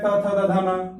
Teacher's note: त वर्ग है, त थ द ध न, दांत से ही होगा।